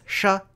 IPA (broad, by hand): ʂ